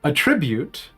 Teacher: pronounced with the accent on the first syllable